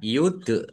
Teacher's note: dal sukun bacaan qalqalah dipantulkan ditampakkan pantulannya